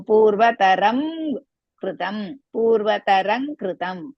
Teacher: Pu is Dirga. Ra half, Vataram, all are Hrisva.